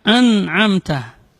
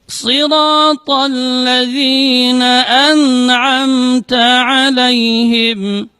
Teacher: Tidak boleh dibaca an'amta. Jadi a dia tidak boleh lari ke khayshum, ke rongga hidung suaranya.